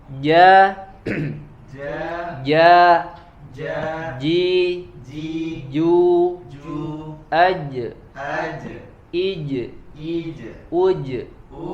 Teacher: Yang pertama jim ya, di mana huruf jim ya, huruf jim itu yakhruju min wasatil lisan ma'a wasatil hanak al-a'la, yaitu huruf jim terbentuk dari menempelnya tengah lidah ya dengan langit mulut bagian tengah